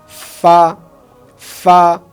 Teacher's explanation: ফা যখন আমি বলবো তখন আমার উপরের 2 দাঁত নিচের ঠোঁটের পেটে অর্থাৎ নিচের ঠোঁটের মাঝখানে লাগবে। ফা, ফা। আমরা যদি বলি ফা, ফা, ফা, অর্থাৎ ফা বলতে গিয়ে আমার সামনে মুখে দিয়ে বাতাস বের হবে।